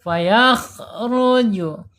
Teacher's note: Fayakh. Kemudian secara sifat ada di al-hams ya, mengalir napasnya ketika mengucapkan huruf kha.